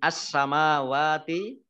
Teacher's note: Alif lamnya Alif Lam Syamsiah tidak dibaca Alif lamnya langsung masuk ke huruf berikutnya yaitu Sin